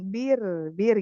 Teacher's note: Nah, Hat- masih kebanyakan takrir tuh, Bun. Takrirnya dikit aja, 2 aja.